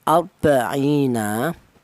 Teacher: ra ini ditebalkan atau dibaca tafhim ya, dibaca tebal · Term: ro yang dibaca tafhim